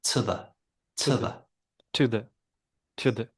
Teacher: They've both got vowel sounds. To has got the oo, and the has got the eh sound. Change both them to schwas, and to the becomes to the.